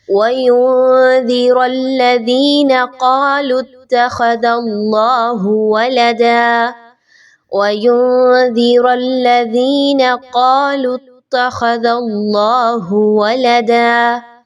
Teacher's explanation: آیت نمبر 4 کی جانب چلتے ہیں، اور اس آیہ مبارکہ میں آپ نے توجہ دینی ہے کہ اللہ کے حرف سے پہلے دال کے اوپر چونکہ زبر ہے تو اس کو باریک نہیں پڑھنا، اللہ کے حرف کو آپ نے خوب موٹا کر کے پڑھنا ہے، باریک نہیں پڑھنا